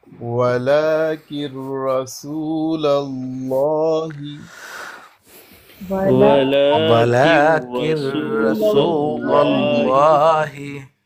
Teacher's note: نون کی آواز بالکل نہیں آئے گی